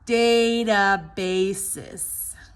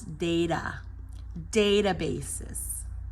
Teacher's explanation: the t is a stop T between two vowels